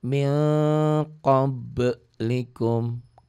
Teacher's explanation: Qab qalqalah sugro, qalqalah kecil karena di tengah dan sudah mati